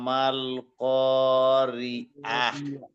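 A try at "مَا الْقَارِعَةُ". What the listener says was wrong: মাশাআল্লাহ,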